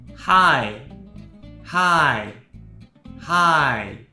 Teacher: In this case, native speakers use hi to represent hi in English. And we even changed the tone from its original first tone to the fourth tone to make it sound even more similar to hi when we say it.